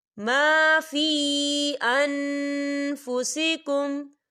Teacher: فی یہاں مدہ ہو رہا ہے اور اس پہ چھوٹی سی مد بھی ہے، تو ہم اسے 4 حرکت کی برابر کھینچیں گے